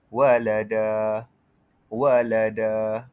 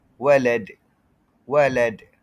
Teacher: Cara bacanya adalah bunyi yang terpantul ringan. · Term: qalqalah sughra